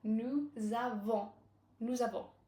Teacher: a consonant at the end of nous, a vowel at the beginning of avant, so we connect them with a Z sound